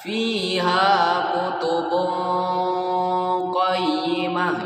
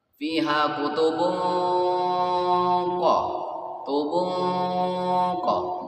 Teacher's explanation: Lalu kita lihat lagi yang tadi surah Al-Bayyinah ayat 3, fiha kutubun qayyimah ya, tanwin bertemu qaf, jadi bacanya ya samarnya itu tebal yang mendekati huruf selanjutnya, huruf isti'la itu. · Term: ikhfa hakiki